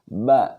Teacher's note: Huruf ba ini keluarnya dua perut bibir bagian dalam. Nah, yang pertama adalah napasnya ditahan.